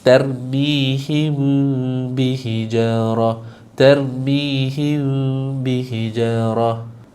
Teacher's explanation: Maksud dia kat sini adalah sembunyikan mim tanpa dengung. · Jangan sebut huruf mim tu, jangan tutup mulut, renggangkan sedikit. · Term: ikhfa syafawi